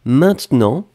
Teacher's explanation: on ne prononce pas vraiment le « e »